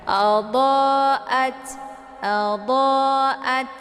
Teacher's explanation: Tak sukun ini dibaca hamas, ada desis anginnya. Jadi jangan dipantulkan ya.